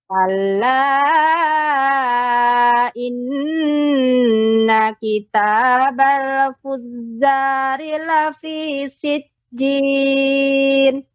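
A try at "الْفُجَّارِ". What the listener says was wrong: Jim pengucapannya tengah lidah. Fujja. Fujja. Seperti itu. Fujja. Dia tidak terlalu fujja. Adapun itu dia terlalu menekan ya. Fujja. Dia ringan pengucapannya.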